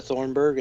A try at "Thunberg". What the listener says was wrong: There's no R in the first half of that last name. Thunberg.